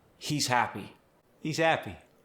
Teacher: The H often disappears in the middle of phrases